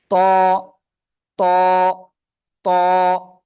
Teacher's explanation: জিহ্বার আগা উপরে দুই দাঁতের গোড়ায় লাগান লাগিয়ে একটু মোটা আওয়াজে এক আলিফ টা নিয়ে উচ্চারণ করতে হবে শুরুতে আসলে শব্দের শুরুতে আসলে এমন হবে শব্দের মাঝখানে আসলে এমন